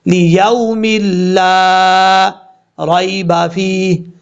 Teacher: اس واو کو بھی لمبا نہیں کرنا کیونکہ یہ واو لین ہے